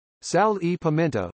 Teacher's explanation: Portuguese uses e [i] before all words.